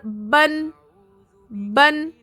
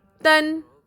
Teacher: اور اگر آپ دو زبر ادا کریں گے تو وہاں آپ کو نون کی آواز چھپی ہوئی رہے گی